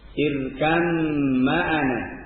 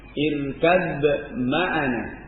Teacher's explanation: Boleh dibaca idgham irkam ma'ana. Hilang ba-nya. Dan yang kedua dengan dibaca izhar pada ba-nya.